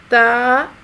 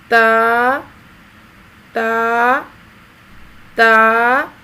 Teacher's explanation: زبان کی نوک کو سامنے والے اوپر کے 2 دانتوں کی جڑ سے لگا کر باریک آواز میں پڑھیں گے۔